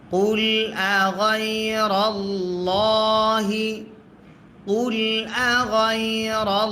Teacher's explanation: আল্লাহ শব্দের লামের ডাইন জবর যদি হয় আল্লাহ শব্দের লাম তখন মোটা করে পড়তে হয়